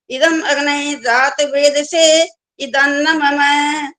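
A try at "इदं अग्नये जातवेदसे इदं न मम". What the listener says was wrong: वही गलतियां करते जा रहे हो, इदम अग्नये बोल रहे हो, ये नहीं बोलना होता। इदम अग्नये इकट्ठा बोलना होता है।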